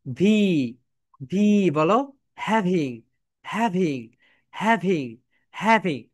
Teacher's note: ভি যখন উচ্চারণ করবে, তখন তোমাদের উপরের দাঁত নিচের ঠোঁটের সঙ্গে টাচ করে